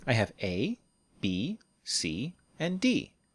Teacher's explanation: we use a pattern of rise rise rise and fall the rising intonation tells our listener hey I'm still talking don't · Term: rising intonation for lists